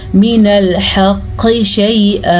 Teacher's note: قاف کا قلقلہ ادا کرنا ہے کیونکہ قاف حروف قلقلہ میں سے ہے